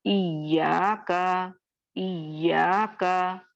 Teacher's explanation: इया का या पे मुशद्दद है, नब्र हो रहा है